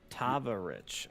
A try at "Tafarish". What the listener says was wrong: It's Tafarish. It's the like with the F and an S.